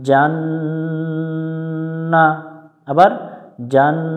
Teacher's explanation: নুন অক্ষরের উপরে তাসদিদ থাকলে গুণনা করে নিতে হয়, এটাকে ওয়াজিব গুণনা বলে।